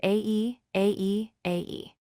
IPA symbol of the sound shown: æ